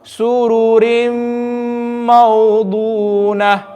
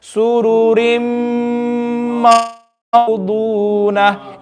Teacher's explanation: In all of these examples, I'm skipping the noon sound, but I'm reading it with Gunna. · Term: idgham naqis